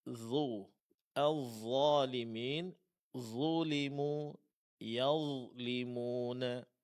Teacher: Huruf d huruf tebal karena dia memiliki sifat istilla.